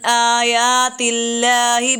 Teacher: یہاں پر ہم نے آیات اللہ میں لفظ اللہ کو موٹا نہیں کیا کیونکہ اس سے پہلے تا پہ زیر آ رہی تھی۔